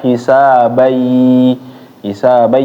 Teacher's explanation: kalau ada an in un tanwin ketemu huruf ya itu dimasukkan